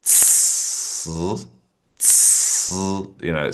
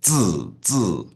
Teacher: It's just with the C, the air comes through first and then the sound follows it. Whereas the Z, it's like a sound from the beginning. Z, Z. Whereas the C is tss, tss, so that the air sort of explodes out and then the sound comes in.